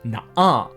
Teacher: the glottal stop which is the sound made at the back of our throat that very suddenly stops the sound between the two syllables of na ah Bears in real life